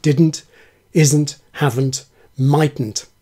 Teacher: 'n't' is still a syllable in its own right after /d, z, v, t/.